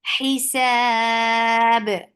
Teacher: Hi for kasra give e sound. Sab temporary sukoon turn this 2 counts long vowel into 4. Hisab ba will get qalqala.